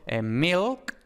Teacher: dependiendo de la variedad del inglés, pues esta L hay veces que tiene un alófono velarizado. Entonces, por ejemplo, milk, esta L, y en otras variedades del inglés, por ejemplo, el inglés americano, la L siempre es velarizada.